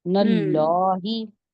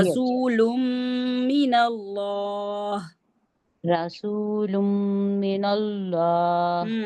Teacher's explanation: आगे मैम हमने नून को, आगे हमने अल्लाह का लफ्ज पढ़ा है, उसमें पहले जबर आती है तो लाम जलाला पढ़ा जाएगा, यानी कि इसको मोटा पढ़ा जाएगा, नल्लाही। दोबारा से पढ़िए।